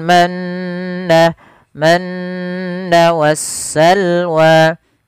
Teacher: mim berharakat tasydid maka ini harus dibaca dengan bacaan gunah yaitu memasukkan suara Nun atau mimnya ke rongga hidung kita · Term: bacaan ghunah, bacaan gunnah